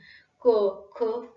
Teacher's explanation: जिभेच्या मागचा भाग म्हणजे मृदू तालूच्या दिशेने वर उचलून क, ख यासारखे ध्वनी निर्माण करता येतात